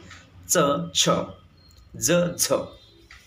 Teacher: Second one is the पॅलेटल place of आर्टिक्युलेशन. ह्या ठिकाणी तुमची टंग ही हार्ड पॅलेटला टच व्हायलाच पाहिजे, तरच तुमचं ते पॅलेटल प्लेस ऑफ आर्टिक्युलेशन प्रोड्यूस होतात.